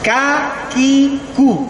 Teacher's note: Kemudian kalau kaf ya, kaf juga masih di sini. Ya, kaf itu di depannya huruf qaf ya, tapi ditipiskan